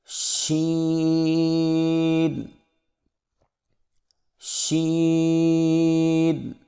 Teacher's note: زبان کے درمیان کو تالو کی طرف بلند کرتے ہوئے باریک اور پھیلتی ہوئی آواز میں پڑھیں